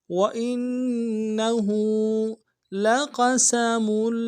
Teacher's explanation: ہا کے اوپر الٹا پیش ہے، ایک مقدار میں کھینچیں گے